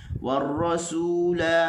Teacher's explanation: sin bagi depan su kena muncung